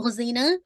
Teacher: तो ख़ज़ीना आपने ख़ा को हेवी करना है, तो ज़ी को आपने इंशाल्लाह लाइट पढ़ना है, लेकिन दाल के मखरज से डिफ़र करना है, ठीक है?